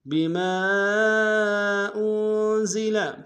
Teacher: بما میں میم کے ساتھ الف مدہ، الف مدہ کے اوپر مد منفصل ہے، کم سے کم دو الف انداز میں کھینچیں گے